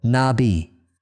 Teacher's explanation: The accent falls on the second syllable